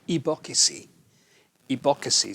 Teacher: it's separating out the b and the x which is really k and s and turning it into four syllables